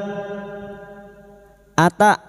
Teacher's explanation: hamzah sukun memiliki sifat jahar dan siddah tertahannya nafas dan suara maka bunyinya jangan samakan dengan ain hamzah sifatnya jahar dan siddah